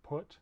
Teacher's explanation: this o sound is a high back rounded vowel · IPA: ʊ